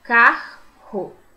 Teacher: o primeiro R Ele parece encostado na última vogal